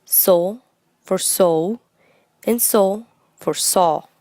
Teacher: The vowel sound O for so and O for saw are pronounced with the Spanish vowel sound O